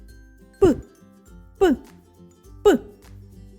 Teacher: пісенька з цього звуку не виходить його не можна Ні потягнути ні проспівати він точно вибухає звук паличкивиручалочки можна тільки почути та вимовити Подивіться як міцно стиснуті